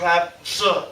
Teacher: kind of like two sounds almost on top of each other. You have the sound of a rolled R, a r sound, and then also the sound of zh